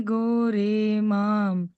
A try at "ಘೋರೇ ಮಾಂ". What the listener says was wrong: ಮಹಾಪ್ರಾಣಗಳು ಎಲ್ಲಿ ಬರುತ್ತಲ್ಲ ಅಲ್ಲಿ ಗಮನಿಸಿ ಗೋ ಘೋರೇಮ್